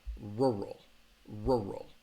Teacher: have that R and that L so it has two syllables row row and that second syllable has that schwa sound